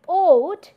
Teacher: When you say oat, you see that your lips are being rounded in order to produce this rounded vowel